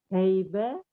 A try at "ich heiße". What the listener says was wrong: Heiß itu bukan B, itu S. Ya, tapi dua S ditulis dengan sharpest S namanya dalam bahasa Jerman. Jadi ich heiße,